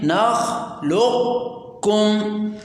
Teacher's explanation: دیکھیں نخلقکم 50% ہم نے قوف یعنی مدغم کی آواز نکالی اور 50% ہم نے مدغم فی یعنی کاف کی آواز نکالی، تو اس طرح پڑھنے کو ادغام ناقص کہتے ہیں۔